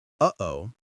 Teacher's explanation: That little catch in your throat between uh and o